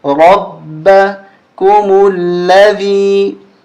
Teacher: با پہ تشدید ہے، سختی کے ساتھ پڑھیں گے، را کو موٹا کریں گے